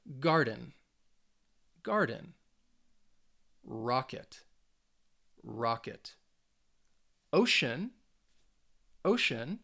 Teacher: with each of those words you should have been able to hear that that first syllable has a little bit more stress there's a little more emphasis on that first syllable so again